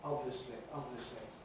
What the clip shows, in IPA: ˈɒbvisli